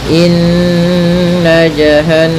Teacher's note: Kemudian jahanama kanat sama caranya adalah dengan menahan suara nnya suara gunanya ditahan atau suara dengungan di nunnya ya. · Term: gunah